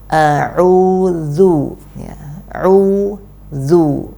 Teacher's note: Kemudian untuk dhammah, maka lafadz yang sempurna untuk harokat dhammah yaitu dengan lafadz u yang benar-benar u, ya, bukan u yang agak ke o-oan gitu